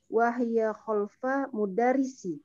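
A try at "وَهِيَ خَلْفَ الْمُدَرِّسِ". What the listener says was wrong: Ayo, wahya khalfal ya. Di situ ada alif lam. Khalfal mudarrisi.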